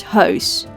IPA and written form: hœys (Huis)